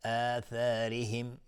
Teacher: را ترقیق هستشون کسره داره